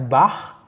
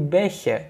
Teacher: Yang dari ch-nya itu keras menjadi lunak, atau di bab 1 itu bagian konsonan kita sebut dengan yang versi keras itu adalah Ach-Laut, sedangkan versi lunak adalah Ich-Laut